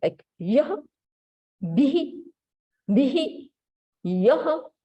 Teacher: it's a half ha sound, and which vowel should be joined with that is like whatever vowel is before this visarg, we add this vowel little bit